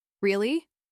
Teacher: Say it with a gentle rise and a soft voice.